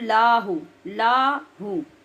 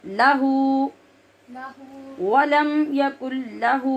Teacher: लाम को लंबा नहीं करना, ज़बर की मिक़दार में पढ़ना है और हु को लंबा करना है।